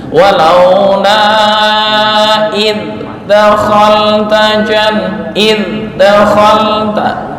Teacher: untuk zal jangan qalqalah. Makhrajnya udah betul, tapi jangan dipantulan